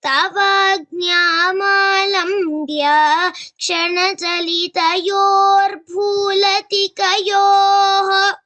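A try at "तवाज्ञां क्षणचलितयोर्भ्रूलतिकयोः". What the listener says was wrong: This should be clearer. Kshana chalitayor bhrulaticayoho. Every samyukta akshara should be heard clearly.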